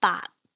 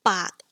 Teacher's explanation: The 8 ends in a T final, whereas 100 ends with a K. So the form of your mouth changes.